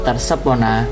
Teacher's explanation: Kilir lidah dalam kata tersebut termasuk ke dalam kekeliruan assembling jenis transposisi, di mana adanya pemindahan fonem atau bunyi konsonan dari satu posisi ke posisi yang lain. Fonem atau bunyi konsonan S dan P mengalami transposisi letak bunyi.